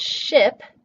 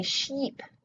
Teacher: And for Spanish speakers, that's going to be [i]. So, a Spanish speaker might come across the word ship and say sheep